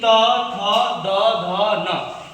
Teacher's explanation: ऊपर के दांतों के पीछे वाला भागों का स्पर्श, ऊपर के दांतों के पीछे पिछले वाले भागों का स्पर्श। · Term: दंत वर्ण